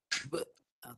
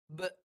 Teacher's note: kalau nak berhenti bunyi be, dia mati dengan hamzah. Be, ujungnya hamzah, bunyi be. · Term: Qalqalah kubra